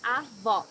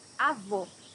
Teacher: Here you need to hear the sound of the last O in the syllable. It should be an open O, as we say in Portuguese.